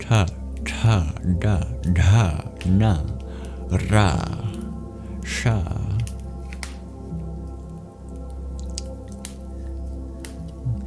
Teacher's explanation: retroflex sounds produced on your hard palate